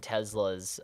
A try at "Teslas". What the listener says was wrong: why'd you say it with A Z?